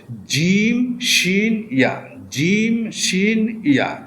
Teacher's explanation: জিহ্বার মধ্যখান তার বরাবর উপরে তালুর সঙ্গে লাগাইয়া 3টা হরফ উচ্চারণ হবে